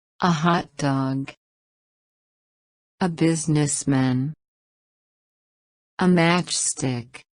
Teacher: Noun phrases. The stress falls on the first word.